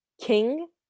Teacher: when you say the letter K, you kind of release air. So you say ka, like king. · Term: kaf